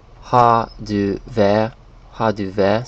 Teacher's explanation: In Danish they say, they kind of drop these R sounds, so it's Har du vært, Har du vært.